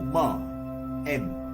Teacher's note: the humming sound, there you are holding this Ma inside your mouth, closed mouth, for some time, and that is when the vibration takes place.